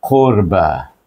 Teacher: dah bacakan dengan Zal dengan alif lam itu bunyinya Zil kemudian AFF baris depan bertemu dengan ra itu qu baca dengan tebal tafkim bacanya kemudian ba di sana ada Alif kecil baca dengan Mad as